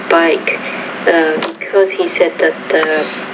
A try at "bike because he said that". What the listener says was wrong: Now work on that tone a little bit here. Your tone is more of a monotone, so remember that it is important to vary your intonation.